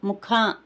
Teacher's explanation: మహాప్రాణ అక్షరం అన్నమాట అంటే పొట్టలో నుంచి పలకాలి